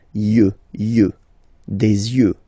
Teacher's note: Don't pronounce the final X as usual.